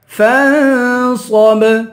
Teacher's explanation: آخر میں با ہے، با حروف قلقلہ ہے، یہاں قلقلہ کریں گے